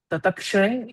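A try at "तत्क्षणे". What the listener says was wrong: Not tatakshane. Tatkshane. Tatkshane. Yeah.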